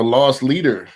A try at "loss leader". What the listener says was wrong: Loss leader. Not lost. Not that you're lost in in like lost